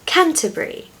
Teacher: It's brie, like the French cheese. Many place names in the UK that end with B-U-R-Y are pronounced brie at the end.